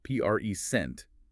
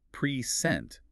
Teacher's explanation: Oh, good one. If you place the heavy beat on the first syllable, present, it's a noun meaning a gift. But if you shift that beat to the second syllable, present, it becomes a verb meaning to give or display something.